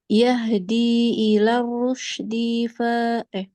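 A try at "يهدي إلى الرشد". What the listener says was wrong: D-nya jangan di ini. Oke, memang kita nggak ada niat buat panjang, tapi karena kita kayak lama terjeda, jadi seolah-olah dalnya itu panjang. Jadi cepat-cepat.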